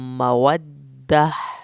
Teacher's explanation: मवद्दह यहाँ पर वक्फ होगा तो ये ता हा में कन्वर्ट होगा, जो हा अंदर से पढ़ना है, हल्क वाला हा नहीं।